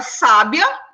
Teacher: a palavra sábia ela já tem a tonicidade dela já tá aí na primeira sílaba